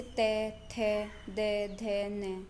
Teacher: जब आप इनको बोलेंगे तो आपको फील होगा कि आपने दांतों पर टच किया है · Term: दंत्य